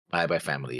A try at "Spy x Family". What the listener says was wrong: Oh, yeah, see, now you're just saying Spy. You're just putting a by instead of X and everywhere now. Again, I've never heard anybody say Spy by Spy. Or Spy by Family. I've heard people say Spy Family because that's in the same nomenclature of not saying the X. But I have always said the X because it's in the name.